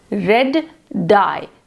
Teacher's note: to articulate red dye, we must take a very short pause before the d sound. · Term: delayed plosion